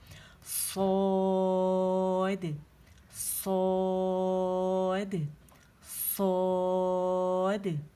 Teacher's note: اس کو مد 4 کاؤنٹ تک کھینچے، اسے موٹا او ساؤنڈ کے ساتھ